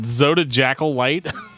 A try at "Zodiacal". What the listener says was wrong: No, Zodiacal. The J is not a J sound.